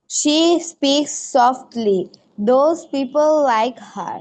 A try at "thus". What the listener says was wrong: দোজ না, দাজ হবে, দাজ। আবার বলো, আবার বলো প্রথম থেকে।